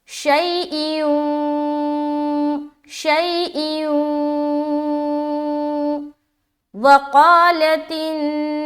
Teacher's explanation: واو آ رہا ہے جو کہ دو زیر کی تنوین کے بعد آ رہا ہے، لہٰذا یہاں پر ہم غنہ کریں گے